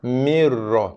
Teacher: Mi terus tekankan bacaan pada huruf ra dengan kita abaikan, gugurkan, hilangkan ataupun lompat bacaan nun tanpa kita menyebut, membunyi, melafazkan bacaan nun mati lagi. Mir, tekan terus bacaan kepada bacaan huruf ra tanpa dengung